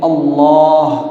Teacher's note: एक हरफ को मोटा करना है, जैसे अल्लाह, ये मोटा पढ़ा जा रहा है। क्यों? कल मैंने बताया था अल्लाह जी, अलिफ के ऊपर ज़बर आया है।